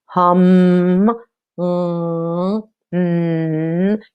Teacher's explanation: feel that vibration hum you know you feel you hear that all of that sound is coming through your nose first is not coming out of your mouth because your mouth is shut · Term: nasal sound